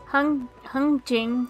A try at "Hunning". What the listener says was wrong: You don't pronounce the G. No.